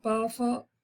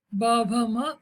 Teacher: प फ कठोर, ब भ म मृदु